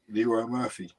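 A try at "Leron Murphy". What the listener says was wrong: It's not Leroy. It's Leron. It's not Leroy. It's Leron.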